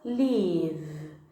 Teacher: Perceba que o V dessa palavra vibra as cordas vocais